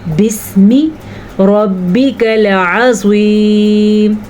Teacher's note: را کو پر پڑھنا ہے اور عین کا تلفظ جو ہے اس کا دھیان رکھنا ہے